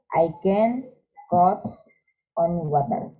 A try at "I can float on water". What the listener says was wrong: Float. Eso.